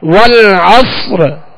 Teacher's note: را واضح معلوم ہو کہ آخر میں جو ساکن حرف کیا گیا ہے وہ را ہے. جس حرف پر ہم وقف کریں گے کلمے کا آخری حرف وہ واضح ہو کہ کون سا حرف ہے، کس کو جو ہے جزم کے ساتھ پڑھا گیا.